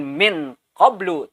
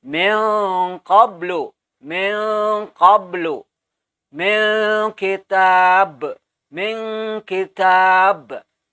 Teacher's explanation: Jadi bunyinya hampir nun atau n dan g atau eng, ya. Tapi bunyi nunnya masih terdengar. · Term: ikhfa ab'ad